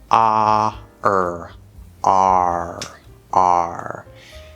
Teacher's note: so first we have r okay so it's not just er we're gonna do ah plus er sort of blend them together and do the r colored fifth vowel on the chart